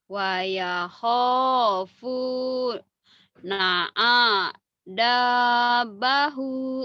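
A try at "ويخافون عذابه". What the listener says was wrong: salah panjang pendeknya tekanannya yang salah. Nah, yang panjangnya kho, fu, sama za, sama hu. Tuh yang di garis bawah itu yang merah yang panjang ya.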